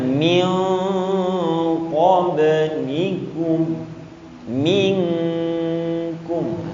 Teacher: ketika nun sukun berjumpa dengan kaf dan qaf dan kaf, maka langsung bunyinya eng, langsung dibunyikan.